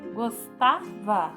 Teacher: Gostava tem a sílaba mais forte, o tá. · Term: sílaba tônica